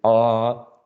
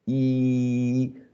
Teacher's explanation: The jaws are more separated when we say ah than when we say e.